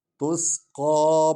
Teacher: تسقى سین سیٹی کی آواز نکلنی ہے ، اور قاف پر کھڑا الف ہے، یعنی مد زبر ہے،